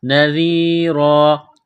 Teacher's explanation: ذال کو باریک کرنا ہے زبان تھوڑی سی باہر نکالیں گے ذال کو پڑھتے وقت · زبان تھوڑی سی باہر نکالیں گے ذال کو پڑھتے وقت نذیرا جب وقف کریں گے تو دو زبر کی تنوین کو الف سے تبدیل کریں گے